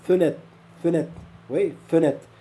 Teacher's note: il y a certaines catégories de gens qui prononcent pas le R